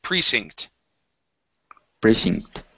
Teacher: this word here is Precinct with the accent at the very very beginning